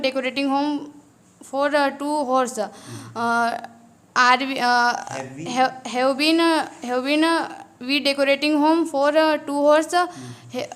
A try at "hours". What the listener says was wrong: Guys थोड़ा सा pronunciation को आपको ध्यान देना है. It's not हॉर्स, it's आवर्स. या तो ऑर्स बोलेंगे या फिर आवर्स बोलेंगे. ठीक है, इस बात का ध्यान रखना है.